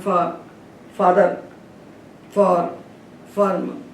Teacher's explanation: फा, दोनों ओठ को मिलाकर जो फा बनता है वही हम लोगों का, भारतवासियों का फा है। और जो दोनों ओठों को मिलाए बिना फा बनता है, फा वा के समान।